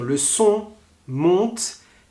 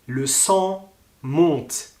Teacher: Le on, le son va tout droit et le en, le son monte.